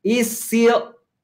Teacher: La S de is con still corrida. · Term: La S corrida